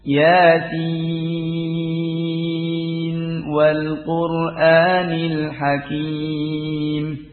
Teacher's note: kalau diwasalkan pada riwayatnya hafaz annasim juga dibaca izhar